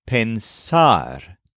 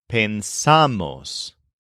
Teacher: in many forms of pensar the part after pens is accented